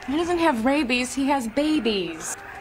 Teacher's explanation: esse doesn't é bem curtinho, ele é quase imperceptível